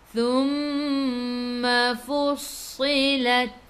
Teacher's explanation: Thumma mim ada sabdu tekan ke dalam mim dan dengung 2 harakat. Wajibul gunnah.